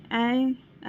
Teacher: जीभ की स्थिति अग्र है, उच्चारण स्थान कंठ तालव्य है और मात्रा दीर्घ है और मुख विवर विवृत है